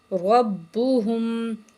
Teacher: را کو موٹا کریں گے اور با کے ساتھ ملائیں گے